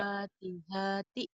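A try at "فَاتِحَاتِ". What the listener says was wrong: Pendek semua. Panjang doang yang panjang.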